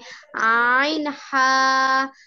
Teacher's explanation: 2 number মাখরাজ হলকের মধ্যখান হইতে